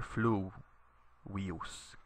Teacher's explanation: you put the accent on the u here, fluvius, because the I here is short. There's no macron over it, and it's not a diphthong.